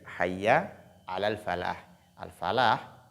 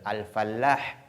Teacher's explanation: Donc, c'est pourquoi il faut pas mettre de l'accent sur la lettre lam